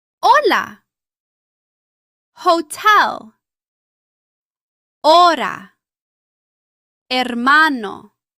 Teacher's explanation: The Spanish H is normally silent. You see the letter, but you do not pronounce it.